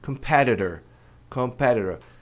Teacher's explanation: Mas a tônica é no PE. Portanto, no inglês americano, esses dois T's vão ser pronunciados como RE